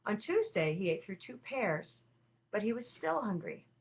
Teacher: by the time you move on to Tuesday you might start just to use some slightly rising intonation